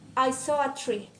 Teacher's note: in the sentence I saw a tree, the words I and a are unstressed while saw and tree are a stress.